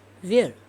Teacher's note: he pronounced this where in a falling tone